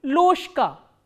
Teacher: this voiced consonant will be pronounced as its voiceless counterpart, which is sh.